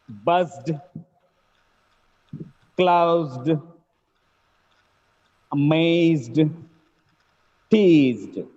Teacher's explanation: Wherever the word ends with Z sound, it gets D sound.